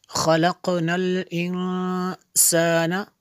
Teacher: نون ساکن کے بعد سین رفع اخفا میں سے یہاں پہ اخفا ہوگا